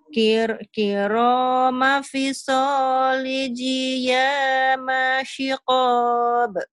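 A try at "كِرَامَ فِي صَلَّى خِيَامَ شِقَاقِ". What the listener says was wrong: Shikok. Lagunya masih ketinggalan nih. Kiroma fisol. Kiroma fisol khiyama shikok. Panjang. titiknya lupa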